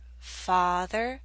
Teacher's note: The ah in father makes you open your mouth more.